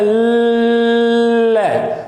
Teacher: तो ल बोलते हैं तो हवा साइड से निकल रही है, बगल से निकल करके आ रही है, हवा बगल से निकल रही है, इसीलिए ल वर्ण को पार्श्विक वर्ण कह दिया जाता है।